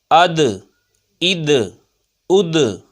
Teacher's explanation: یہ دال حروف قلقلہ میں سے ہے، آواز لوٹتی ہوئی آئے گی۔